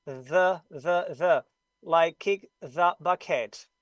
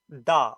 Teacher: You have to put your upper teeth right here on the blade of the tongue, bite it slightly, then there's air and friction, and you produce a beautiful TH voice sound.